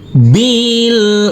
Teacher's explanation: huruf nunnya kita samarkan pada waktu berdengung kita persiapan masuk ke huruf t